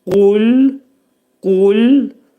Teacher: qaf hərfindən çıxıb ləm hərfinin məxrəcinə girmək lazımdır. Ləm hərfini incə bildirmək lazımdır. · inə qul bax bu sözdə qaf hərfi doğdır qalın hərfdir qul dedikdə ümumiyyətlə qaf hərfinin məxrəcini birinci deyim qaf hərfinin məxrəci dilin sonu və dilçəyin başlanğıcındadır